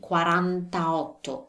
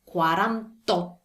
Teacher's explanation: them together it should be quarantato but we don't do that since otto begins with a vowel we drop the vowel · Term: drop the last vowel